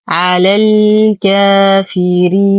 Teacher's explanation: ننتقل من فتحة اللام الأولى إلى إسكان اللام القمرية، حرف المد يسقط بسبب التقاء الساكنين